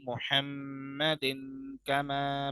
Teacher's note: इख्फा, क्योंकि तनवीन के बाद क्या आ रहा है? काफ आ रहा है।